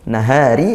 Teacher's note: Ri ini ro darqiq dibaca tipis karena rnya kasrah